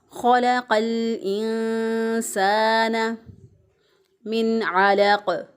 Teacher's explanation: अलिफ मद्दा है, अलिफ पहले वाले हरफ पर ज़बर, एक अलिफ के बराबर इसको भी लंबा करेंगे।